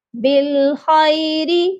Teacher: را باریک پڑی جائے گی کیونکہ را کے نیچے زیر ہے